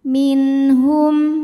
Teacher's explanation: Ada hukum idhar halqi karena ada nun sukun menghadapi huruf halqi atau huruf tenggorokan yaitu ha. Maka nun sukun dibaca jelas.